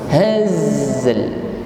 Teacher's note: Haz masih berjalan, yaitu sifat rokhawahnya pada huruf zai. Jadi bukan wa ma huwa bil hazl, tetapi disempurnakan dulu haz, sifat rokhawah pada huruf zai, baru ditutup dengan huruf lam dengan sifat tawassut.